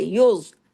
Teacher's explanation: नफसिम मा कैसबत वहुम ला युज़लमून, सब सब बारीक है सिवाय ज़ौ के, युज़, ज़ौ को हैवी, और बाकी सब बारीक